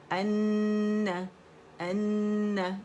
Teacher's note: ہر غنہ مشدد ہے، اکمل گریڈ کا غنہ کریں گے 2 2.5 3 تک آواز چلی جاتی ہے